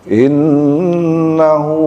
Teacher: Jadi inna ya ditahan sebentar karena ada gunnah, kemudian hu-nya juga itu panjang ya.